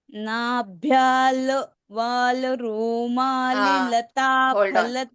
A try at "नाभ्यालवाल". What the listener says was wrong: So here you observe, it's not nabhyal, it is nabhyalavala Okay, so this la is there, no? The third letter in second line. It is not nabhyal l. It is not l. It is nabhyala la. Okay, nabhyalavala.